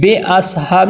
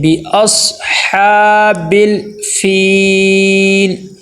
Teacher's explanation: ربک، بی، با کے نیچے زیر ہے اور زیر کو معروف ادا کرنا ہے، مجہول نہیں ادا کرنا ہے